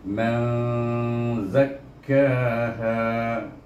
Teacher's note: Saya tak bunyi man dan saya tidak bunyi maz. Iaitu kalau maz idgham, kalau man izhar. Jadi antara-taranya, antara dua itu, antara dua sifat itu, iaitu man zakkaha.